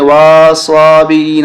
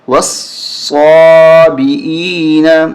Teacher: واو کو صاد کے ساتھ ملاتے ہوئے سختی کے ساتھ پڑھیں گے ۔ واو صاد زبر وس، صاد کھڑا زبر صا، وس صا،